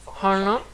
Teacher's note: on a le hana avec la langue au palais